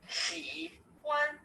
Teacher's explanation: Now there are two tones to it. The first is the third tone and then a flat tone.